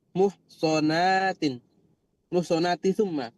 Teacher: Bukan sodnya yang dipanjangkan tapi na'nya nggih.